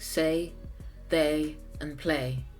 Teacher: diphthongs like the a in words like say they and play it sounds like a single vowel although it's two said very quickly